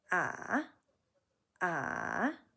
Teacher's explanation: So you dip down, bounce back up. Ah. You hit a little bit of a gravelly spot in the middle there. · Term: third tone